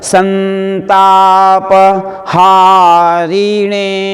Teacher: शिष्य, बलाघात हो गया सी के ऊपर, छोटी ह्रस्व मात्रा है ना। शिष्य सन, पीछे ता आया है इसलिए अनुस्वार को न बोला जाएगा